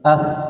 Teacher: sa keluar dari mana makhrajnya ujung gigi